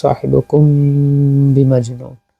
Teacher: ওয়া মা সাহিবুকুম বিমাজনুন, এই যে মিম সাকিনের পরে বা আসছে, ইখফা শাফাওয়ি, গুন্না হবে